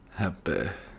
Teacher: The last syllable of happy is often close to eh.